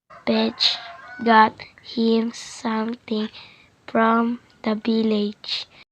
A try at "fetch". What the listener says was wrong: The learner mispronounced fetch for the 5th time as petch.